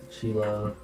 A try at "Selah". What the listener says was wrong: Selah, not with a SH. Or Selah.